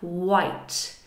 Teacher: nice double vowel there, it glides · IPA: /ai/